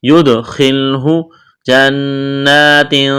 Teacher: غنہ کریں گے، آواز ناک میں چھپائیں گے، اخفا کریں گے، تنوین کے بعد تا ہے۔